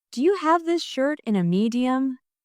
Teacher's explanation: The stress is on have, shirt, and medium. So it sounds like Do you have this shirt in a medium? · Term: rhythm